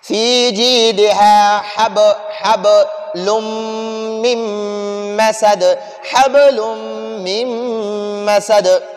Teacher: یہ دال وقف کی وجہ سے ساکن ہو گیا تو اس دال پر بھی ہم قلقلہ کریں گے